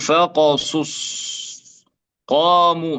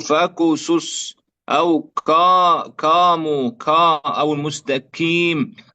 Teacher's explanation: إذا لابد من تمكينها في المخرج وعدم مشابهتها للكاف، لأن القاف صوت مفخم قوي ليس كالكاف